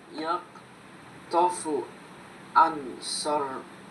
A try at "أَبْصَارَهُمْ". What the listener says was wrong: আবসারহুম, এটা বা, আলিফের পরে এটা বা। আব,